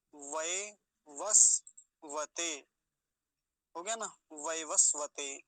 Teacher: वैवस्वत व वकार पर ई का की मात्रा है व वस्व वैवस्वत सकार हलंत है तो आधा ही रखेंगे उसको